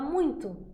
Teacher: esse U E esse I são nasalizadas também · A gente não fala muito, a gente fala muito, certo? Esse U e esse I são nasalizados também, tá? São ditongos nasais.